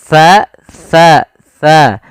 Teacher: itu ujung lidah nempel dengan gigi dari atas